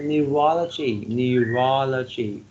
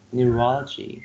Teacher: four syllables and the second syllable receives the stress